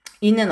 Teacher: 이는 전설 모음이면서 평순 모음이면서 혀의 높이가 위에 오는 고모음이네요